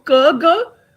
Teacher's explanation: Velar. So it's the back of the tongue which is coming in contact with the soft palate, causing a complete closure.